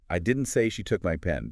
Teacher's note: You're strongly emphasizing you absolutely did not say that. Stressing didn't is emphatically denying saying those words.